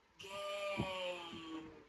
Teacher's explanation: the front part of the tongue arches up towards the roof of the mouth, while the tongue tip remains down. When you see this symbol followed by this symbol, it's no longer a pure a.